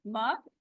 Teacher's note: दोनों होंठ मिला के। इसमें नाक से आवाज नहीं आएगी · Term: मीम